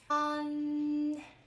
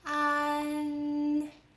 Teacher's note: Open your mouth wide for the ah, and then bring your tongue tip up to touch behind your upper front teeth. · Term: front nasal finals